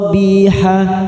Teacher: karena kita wakaf di sini ha kita panjangkan dua harakat